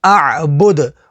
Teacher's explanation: وقف تام کی وجہ سے دال کو ساکن کر دیں گے. دال حروف قلقلہ میں سے ہے تو یہاں پر قلقلہ ہوگا